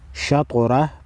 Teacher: وقف کی صورت میں شطرہ پڑھیں گے۔ طا کو ہلا کر پڑھیں گے، طا حروف مستعلیہ ہے، موٹا پڑھیں گے، را پر زبر ہے، را کو بھی موٹا پڑھیں گے